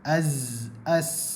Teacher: Bahagian hujung lidah di bahagian belakang gigi kecil bawah. Ataupun pangkal gigi kecil bawah. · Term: suara sofir